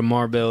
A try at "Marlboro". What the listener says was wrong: No, there's no bell. Are you saying marble like the marble?